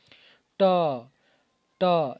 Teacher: जीभ टेढ़ हो जा रहा है और सबसे ऊपर जो हमारा कपाल वाला है जहां नासिका छिद्र है वहां सट रहा है ट ट यानी वही मुर्धा है त अब देखिए त ये